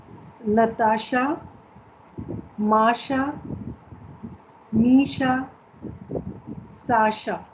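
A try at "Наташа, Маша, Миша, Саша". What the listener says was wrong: Very good.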